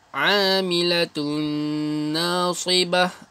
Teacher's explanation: Dengung ya. Masukkan tun dengan na.